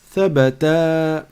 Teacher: Or, j'ai prolongé la fin parce qu'il y a le alif.